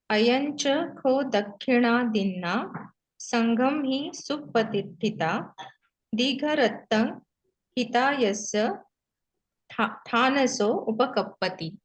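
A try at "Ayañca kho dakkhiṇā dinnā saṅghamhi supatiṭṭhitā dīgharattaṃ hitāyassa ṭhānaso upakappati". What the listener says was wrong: Yeah, great.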